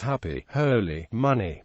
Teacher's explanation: A lack of happy tensing with the final vowel of happy, holy, money, etc.